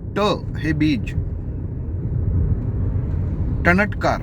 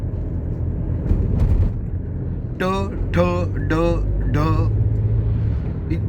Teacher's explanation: आपली जीभ टाळूला लागल्याशिवाय ज्याचा उच्चार होत नाही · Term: ट वर्गातील